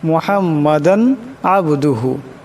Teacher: দালের উপর দুই জবরের তনবিন এরপর আইন আসছে এখানে গুনা করা যাবে না মুহাম্মাদান আবদুহু এমন হবে এলকে গুনা পড়া যাবে না।